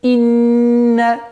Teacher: Удерживаем назализацию в размере двух огласовок.